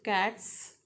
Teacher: because of T voiceless S becomes voiceless